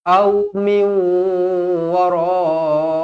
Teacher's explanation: Min, pastikan mulut dimuncungkan sebab kita masukkan ke dalam huruf waw. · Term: idgham ma'al gunnah